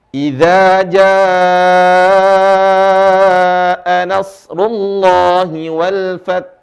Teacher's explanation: Idza jaa janya panjang sekali, lebih dari 2 harokat. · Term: mad far'i